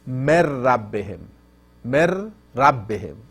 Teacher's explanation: The Noon enters to Ra and disappears.